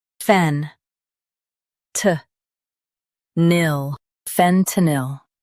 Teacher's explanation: Stress fen and keep t soft.